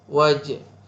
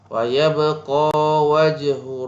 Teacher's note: Wajhu jaga huruf ja, jim ni ada qalqalah sikit